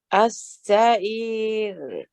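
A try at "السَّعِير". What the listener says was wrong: Yeah, the ra is better. It's light. But you've lost the ain, Auntie. Don't forget the makhraj of the ain. As-sa'ir.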